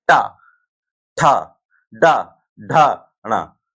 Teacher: हर जिह्वा कहां टकरा रही है? उठे हुए भाग पर यानी मूर्धा पर